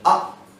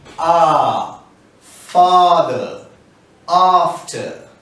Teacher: so that's a short up you drop your jaw and you say ah on the long sound you extend it and you say ah